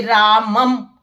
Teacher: और जैसे किसी भी शब्द के ऊपर बिंदी लगी होती है तो उसको हम म पढ़ेंगे, और जैसे रामम तो शब्द के अंत में अगर बिंदी होती है तो इसको संस्कृत में अनुस्वार कहा जाता है और उसका उच्चारण म होता है